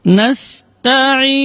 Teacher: Jadi tidak boleh ta ditebalkan karena ta termasuk huruf tarqiq, huruf yang tipis. Ta, ujung lidah berada di usul thanaya, di pangkal gigi seri atas. Dengan posisi lidah istifal, yaitu posisi lidahnya berada di bawah, tidak terangkat.